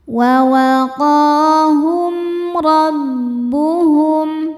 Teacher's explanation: Berikutnya ada hukum izhar syafawi karena mim sukun tidak menghadapi huruf mim atau huruf ba melainkan menghadapi huruf ro. Maka mim sukun ini dibaca dengan izhar atau jelas.